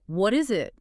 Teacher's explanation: Instead of a hard, explosive T sound, your tongue just taps the alveolar ridge, that spot right behind your upper teeth, very quickly. It sounds much more like a soft, quick D. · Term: flap D